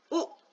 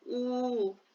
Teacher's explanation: ई ये थोड़ा खींचा हुआ है, तो 2 गुना समय लेता है। उ ये बहुत कम समय लेता है। ऊ 2 गुना समय ज्यादा लेता है।